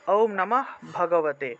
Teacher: শব্দ বা বাক্যের মাঝখানে থাকলে বিসর্গ এর উচ্চারণটা অর্ধরূপে হয় অর্থাৎ এভাবে নমঃ নমঃ উচ্চারণটা হলো নমহ বলা যাবে না নমহ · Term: অর্ধহ